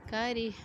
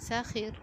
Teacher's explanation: کریہ میں را کے نیچے زیر ہے، اس کو ہم نے موٹا نہیں، اس کو ہم نے باریک پڑھنا ہے، ٹھیک ہے۔ اسی طرح شریبہ را کے نیچے زیر ہے، اس کو باریک پڑھنا ہے، جبکہ سخیرہ را کے اوپر زبر ہے، زبر اور پیش والے را کو پر پڑھا جاتا ہے، ٹھیک ہے۔